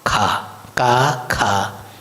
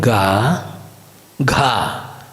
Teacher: The ka, if you add with an aspiration, it becomes kha